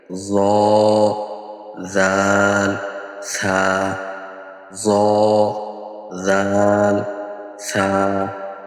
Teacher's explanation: ১৩ number মাখরাজ জিহ্বার আগা সামনের উপরের দুই দাঁতের আগার সঙ্গে লাগিয়ে